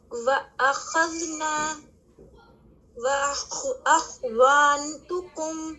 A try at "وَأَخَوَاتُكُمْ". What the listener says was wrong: وہاں پہ فتح ہے. وَأَخَوَاتُكُمْ دیکھیں آپ نے یہاں پہ خواہ پہ کیا کیا, آپ نے محسوس کیا کہ آپ نے اپنے ہونٹوں کو گول کیا ہے.